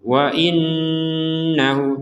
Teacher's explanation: Ada nun bertasydid. Nun bertasydid kita harus mendengung.